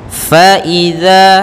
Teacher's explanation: Faiza, hati-hati dalam lafal fa, jangan dibaca pa tapi fa, alirkan nafas kita